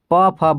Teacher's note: जो पवर्ग होता है वह ओष्ठ होता है